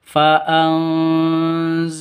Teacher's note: lafdul jalalah Allahu ada di tengah berarti cuma dua ketukan panjangnya